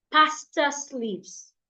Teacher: Pastor ends in letter R, but the next word does not start with a vowel, so I cannot link them. This sentence, I have to read them separately.